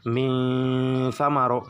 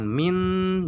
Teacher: nunnya agak ngambang pertengahan gitu, pengucapannya agak disamarkan, harus pertengahan samarnya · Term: ikhfa ausat